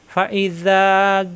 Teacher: চার আলিফ টানতে হবে জিব্বার মাঝখানে উপরে চাপ দিয়ে ফাইজা ইজা জিব্বার আগা দাঁতের আগায় লাগিয়ে নরম করে